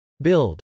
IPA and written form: bˈɪld (build)